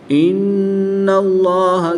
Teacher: نون مشدد میں غنہ کر کے پڑھیں گے. اس میں جلالت اللہ عز و جل کے لام سے پہلے حرف کے جب اوپر زبر ہے تو اس لیے اس میں جلالت اللہ عز و جل کے لام کو پر یعنی موٹا پڑھیں گے.